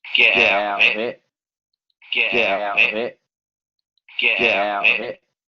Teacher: todas esas dentales, o más bien alveolares oclusivas, se transforman en la glotal.